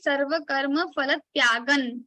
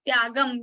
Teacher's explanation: That's why we say sarva karma phalat tyagan, not tyagam, because after anuswara there is ta, and for the ta varga, for the ta group we have na as a nasal consonant. So that nasal consonant sound will come here, and it will become sarva karma phalat tyagan, tyagan, right?